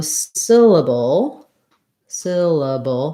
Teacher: three syllables first syllable stress